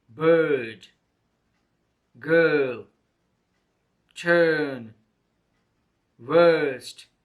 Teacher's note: is a single and long vowel sound the mouth is made open the tongue position is in the center of the mouth